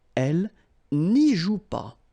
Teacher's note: remember the ne followed by a vowel, they don't really get along, so should go away